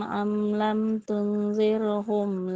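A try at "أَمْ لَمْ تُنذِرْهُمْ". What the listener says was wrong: Oke, ditahan dulu sedikit ya 2 harokat. Anzartahum am lam tunzir. Tunzir.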